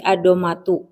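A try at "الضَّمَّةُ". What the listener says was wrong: Ad-dham tasydid. Dua-duanya tasydid ad-dhammatu.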